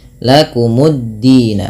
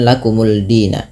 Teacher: Ke dal, dimasukkan ke dal, lamnya tidak ada lagi sehingga dalnya tasydid. Maka menjadi lakumuddina, bukan lakumuldina. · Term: idgham syamsiyah